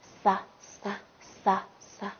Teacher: 那么它的发音部位呢？发音部位是舌尖前。